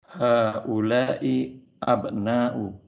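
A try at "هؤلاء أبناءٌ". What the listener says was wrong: Haula'i abna'un. Nah, tanwin Pak. Haula'i abna'un.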